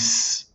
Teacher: the sound source is that point of turbulence between my tongue and the alveolar ridge. It's that point of constriction that is making that white noise. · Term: voiceless consonant